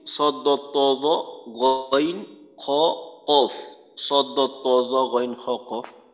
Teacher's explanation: ইস্তিআলা সিফাতের হরফগুলি আদায় করার সময় জিহ্বার গোড়া উপরের তালুর দিকে ওঠার কারণে হরফগুলো পুর বা মোটা হয়